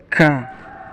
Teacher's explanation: arah langit-langit mulut pangkal lidah ditempelkan ke ujung tenggorokan tekanannya kuat huruf Kaf seperti huruf k disertai keluarnya nafas